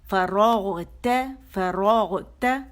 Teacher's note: ف باریک اور رو موٹی ہوگی, اس میں رو غین موٹا ہوگا, ت باریک ہوگا اور آواز ایک کاؤنٹ کے لیے اوپر جائے گی.